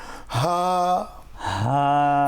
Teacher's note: হা হা একদম বুক থেকে আসবে, কিন্তু কণ্ঠনালীর শুরু থেকে আওয়াজটা বের হবে।